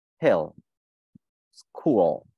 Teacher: Âm L ở cuối thì không đọc là hin, không đọc là school, mà đọc là âm O, hill, school.